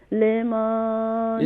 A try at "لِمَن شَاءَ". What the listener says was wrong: لیمن نہیں ہے بلکہ لیمن. جی کلیئر کر کے یہاں پر اخفا کریں گی نا لیمان نہیں ہوگا لیمن. لمن شاء منکم. لیمن نہیں کریں گے, لیمن کریں گی تو پھر لام کے بعد یا کا اضافہ ہو جائے گا.